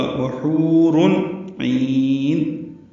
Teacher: تنوین کے بعد عین آنے کی وجہ سے اظہار ہوگا ، وحور عین، عین وسط حلق سے ادا کریں گے، لمبا